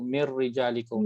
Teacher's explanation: Kita tak sebut min rijalikum, kita sebut mirrijalikum sebab nun bertemu dengan roh.